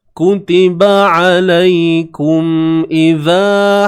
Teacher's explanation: Mim mati bertemu hamzah. Izhar syafawi. Izhar ni jelas lah. Jelas pada makhraj mim tu. Jelas pada sebutan mim.